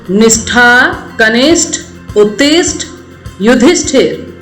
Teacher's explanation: अगला एग्जाम्पल, निष्ठा, कनिष्ठ, उत्तिष्ठ, युधिष्ठिर। इसमें मूर्धन्य श का मेल ठ के साथ हो रहा है